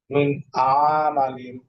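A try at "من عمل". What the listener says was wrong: আইন টান হবে না, মিন আমালিন। আইন টান হবে না, মিন আমালিন। এখানে আইন টানের কোনো পদ নাই।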